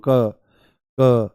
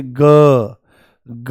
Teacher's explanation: तो ये वाला जो हिस्सा है, ये यहां पर जो है, इस पे हाथ लगाओ आप और बोलो, देखो हल्का सा बोलो क क क, नॉर्मल बोलो क क। तो आपको कोई वाइब्रेशन यहां पर महसूस नहीं होगी, परंतु जैसे ही आप बोलोगे ग ग, पूरा झंझना जाता है